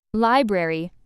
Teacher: Library, stress on first syllable